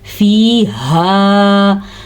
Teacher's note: ہاں کو چھاتی سے نکالنا ہے, ہا نہیں پڑھنا اس کو, خا بھی نہیں پڑھنا اس کو, پڑھنا ہا. فیہا.